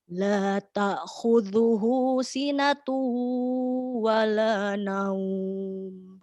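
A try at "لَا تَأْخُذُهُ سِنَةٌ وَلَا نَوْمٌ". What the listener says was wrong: Pada huruf ta, ketika dihentak jangan terdengar bunyi ain. La ta sempurna.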